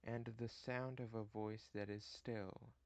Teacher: the anapest short short long the inverse of the dactyl